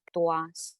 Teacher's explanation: the diphthong here will be u plus a